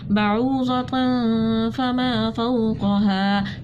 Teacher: دو زبر کی تنوین کے بعد فا گئی تھی تو ہم نے اخفا کیا. الف مدہ تھی, ایک الف کے برابر کھینچا, یہاں پر بھی الف مدہ تھی, ہم نے اس کو ایک الف کے برابر کھینچ کر پڑھا.